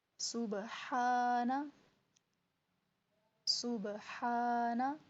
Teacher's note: سین کو سیٹی کے ساتھ ادا کر کے با پہ قلقلہ ہوگا